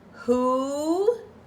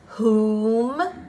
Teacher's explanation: who you just hear the H sound you do not see you do not say the W sound